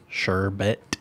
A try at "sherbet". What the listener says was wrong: There's no second R.